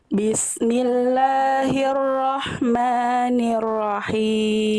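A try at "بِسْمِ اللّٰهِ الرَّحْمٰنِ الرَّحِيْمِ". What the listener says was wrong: oke bagus Bunda lanjut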